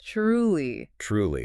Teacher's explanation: It is spelled with a T-R, but in spoken English, it often sounds a bit like a C-H.